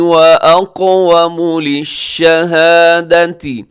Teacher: واقوم بھی قاف موٹا ہے